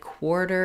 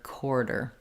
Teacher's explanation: Okay, we had a question about are there two ways to pronounce the beginning of the word quarter? With very clear W glide, quarter, and the other way maybe lazier, smoother, quarter.